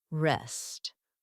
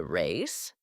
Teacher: the difference between the short e sound in rest and the long a sound in race